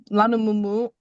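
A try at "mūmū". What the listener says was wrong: Don't say mumu. Hang on. Don't say mumu. It's moo moo.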